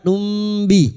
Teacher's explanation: Mim sukun kita samarkan tumb sambil mendengung dan siap membunyikan huruf ba. Kita dengungkan selama tiga harakat. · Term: ikfa syafawi